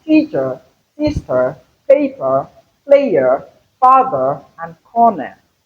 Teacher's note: For instance, T is pronounced louder than ch. Hence, the accentuation or the stress is on the first syllable. So we mostly have the schwa sound, the sound in syllables that are weak. · the schwa sound, the sound in syllables that are weak. because it is the shortest and weakest vowel sound we have in English language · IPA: /ə/